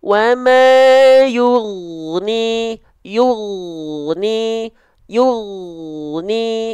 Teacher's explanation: huruf ghoin jangan sampai terputus suaranya. Jadi selain banyak orang melafalkan suara huruf ghoin ini dengan memantulkan suara ghoin, banyak orang juga yang melafalkan huruf ghoin sukun ini dengan memutus suaranya. · G, go, gi. Tapi kalau ghoin itu sifatnya rokhwah, lemah suaranya. Lemah hurufnya, maka suaranya ngalir